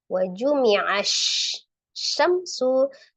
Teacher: itu ada alif lam syamsi ya, langsung ditasdid ke huruf shin ya.